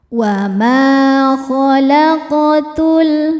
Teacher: cara bacanya dipantulkan dengan pantul yang kecil · Huruf qaf sukun dihukumi qalqalah sughra karena qafnya qaf sukun dan berada di tengah-tengah bacaan. Cara bacanya dipantulkan dengan pantulan yang kecil. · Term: qalqalah sugra